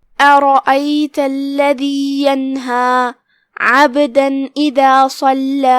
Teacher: ابہار کا معنی ہے ظاہر کرنا لہذا ہم یہاں نون ظاہر کریں گے اور بغیر غنہ کے حکم کو ادا کریں گے. پھر آخری میں یہاں مد طبیعی ہے لہذا ہم اپنی آواز 2 مد کے برابر کھینچیں گے آخری میں.